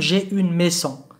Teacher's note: لاحظوا هنا الاس نطقناها زيد، وقد تكلمنا في الحصة الماضية على أن الاس عندما تكون بين entre deux voyelles two vowels تقلب زد